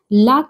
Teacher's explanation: ल पार्श्विक व्यंजन है।